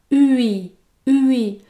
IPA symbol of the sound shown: ɥi